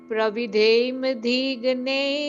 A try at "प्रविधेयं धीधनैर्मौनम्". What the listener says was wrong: इसमें र को पहले पढ़ना होता है। स्वपरहितमेव मुनिभिर मितममृत समं सदैव सत्यं च वक्तव्यं वचनमथ प्रविधेयं धीधनैर्मौनम्।